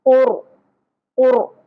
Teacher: را ساکن پر پڑھا جائے گا کیونکہ را ساکن سے پہلے پیش ا گئی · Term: قاف بھی پر، را بھی پر